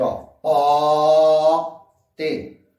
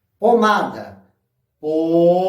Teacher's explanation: quando eu falo pote, o O, ele é aberto